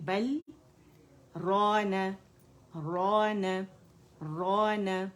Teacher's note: اب را جو ہے یہ موٹا ہوگا اور الف مدہ بنا ہے. را نہ اور فتح کے جہاں بھی فتح ہے یہاں پہ تو ایک کاؤنٹ کے لیے جو ہے آپ کا جبڑا کھلے گا کھلے گا، اور کسرہ کے لیے ایک کاؤنٹ کے لیے جبڑا نیچے جائے گا جائے گا.